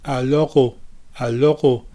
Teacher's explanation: For the alors au début, I want you to keep the tip of your tongue down. For the L in alors, don't raise the tip of your tongue up like an English speaker would normally do.